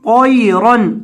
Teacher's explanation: وَأَرْسَلَ عَلَيْهِمْ طَيْرًا طا زبر یا طی را دو زبر رن طیرن طا کو بھی اور را کو بھی دونوں کو موٹا کریں